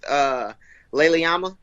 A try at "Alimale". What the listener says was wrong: Alimale. Yeah, you had it backwards, but yeah.